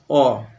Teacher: যে স্বরধ্বনির উচ্চারণে জিহ্বা উচ্চ মধ্য আর নিম্ন স্বরধ্বনির মাঝামাঝি অবস্থানে করে অর্থাৎ একেবারে নিচে না নিয়ে একটু ওপর দিকে, তাকে বলে নিম্ন মধ্য